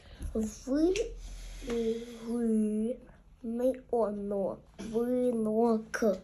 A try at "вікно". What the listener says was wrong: так тільки тут не ни а літерка т